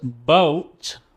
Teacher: Whereas boat, where the lips come together, boat is more of a voiced sound